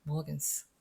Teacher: 단어 맨 끝에 나왔기 때문에 S가 무성음으로 소리 납니다